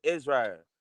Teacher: she'll drop the L and make it into a strong R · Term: rolling R